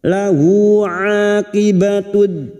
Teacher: Lahu aqibatud, a huruf ain fathah diikuti alif 2 harakat mat tabi'i